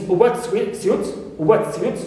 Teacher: here as a noun phrase, I must stress the second part